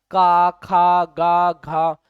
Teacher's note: इसके उच्चारण के समय आवाज हमारे कंठ से निकलती है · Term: क वर्ग